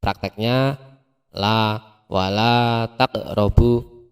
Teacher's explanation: Jadi dibaca panjang, panjangnya dua harokat atau dua ketukan. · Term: mat tabi'i